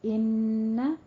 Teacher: ان غنہ واجبہ ہے 2 کاؤنٹ کرنا ہے